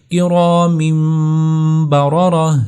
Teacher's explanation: تو 2 زبر، 2 زیر، 2 پیش اور نون ساکن، جب ان کے بعد حرف با آتا ہے تو وہاں پر نون ساکن یا 2 زبر، 2 زیر، 2 پیش کے اوپر نیچے یہ چھوٹا میم لکھا جاتا ہے، تاکہ یہ بتایا جائے کہ یہاں پر اقلاب ہوا ہے۔ اقلاب کہ نون ساکن کی آواز کو میم ساکن میں بدل کر پڑھنا، اس کو اقلاب کہتے ہیں